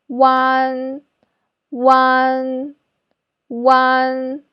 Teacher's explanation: the first sound is ooh like food but your lips should be rounder